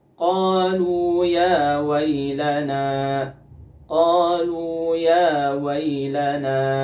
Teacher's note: di sini ada Nun yang berharakat fathah maka ghunahnya dia tetap harus ada gunahnya namun ghunah yang sangat tidak sempurna atau gunah pada tingkatan yang keempat demikian pembahasan kita teman-teman pada